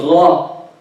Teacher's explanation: the ghayn, the sound is flowing, that's rakhawa, but no breath with it.